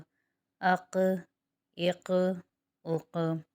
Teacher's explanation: یہاں پر قاف بھی حروف قلقلہ میں سے ہے اور حروف مستعلیہ بھی ہے، تو یہاں پر قلقلہ بھی ہوگا قاف پہ، اور قاف کو موٹا بھی پڑھیں گے